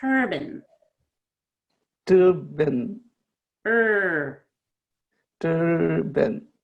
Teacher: tur be more stretched out and the ben is faster. Ben is a reduced syllable, turban. Turban.